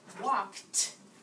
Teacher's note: So if I said walked, it sounds like a T at the end, but it's ED, okay?